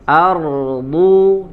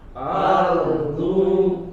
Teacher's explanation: Huruf dod dari samping ya, gigi geraham nempel dengan bagian sisi lidah kita.